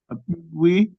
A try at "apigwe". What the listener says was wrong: Apigwe. The second A is apigwe, not E. You're tending sometimes to change an E to I. So you're pronouncing it apigwe, but it should be apigwe. The second one.